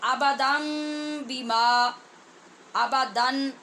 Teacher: جب اس کو ملایا تو یہ جو آبادن میں نون کی آواز تھی اس کو ختم کیا اور یہاں پہ میم لائے، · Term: اقلاب